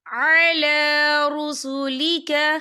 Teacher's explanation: ربنا وآتنا ما وعدتنا علی رسولک، یا دیکھیں علی، لام کے پر کھڑی حرکات ہے تو ہم اسے 2 یا 3 حرکت کے برابر کھینچیں گے